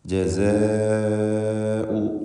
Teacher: ദീർഘാക്ഷരമായ അലിഫിനെ 4-5 ഹറക്കത്തിൻ്റെ അളവിൽ ഈ പദത്തിൽ ദീർഘിപ്പിക്കൽ നിർബന്ധമാണ്. മദ് മുത്തസിൽ വാജിബ്.